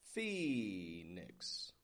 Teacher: Strong in the beginning, fee, and then nix. Flat, quick on the ending.